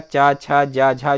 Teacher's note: चा, छा, जा, झा जो है वो स्पर्श संघर्षी होते हैं